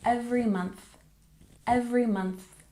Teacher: we have every month stress the first syllable every month and we have that th sound so put your tongue between your teeth